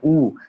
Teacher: उ जब उ का उच्चारण कर रहे हैं तो आपके दोनों होठ बाहर की तरह निकल रहे हैं